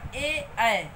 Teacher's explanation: कंठ तालव्य इनको बोलते हैं क्योंकि इनके उच्चारण में हवा कंठ और तालु दोनों को स्पर्श करती हुई बाहर आती है।